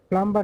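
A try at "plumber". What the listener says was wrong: প্লামার, এটা সাইলেন্টটাকে উচ্চারণে আসবে না। প্লামার, পানির মিস্ত্রি।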